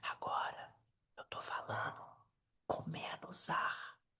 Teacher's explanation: Agora, eu tô falando com menos ar. Eu tô apertando a minha garganta. Eu tô sussurrando.